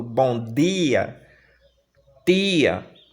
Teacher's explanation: São palavras que a gente utiliza esse T e esse D de maneira muito palatalizada